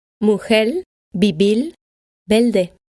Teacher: In the Spanish-speaking Caribbean, or to be more specific, in Cuba, Puerto Rico, the Dominican Republic, and some regions on the Colombian coast, the letter R at the end of a syllable or at the end of a word may be skipped, or it might sound like an L.